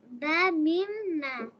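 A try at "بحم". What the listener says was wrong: ওটা হা হবে, বা হা মিম, ঠিক আছে? বা হা মিম।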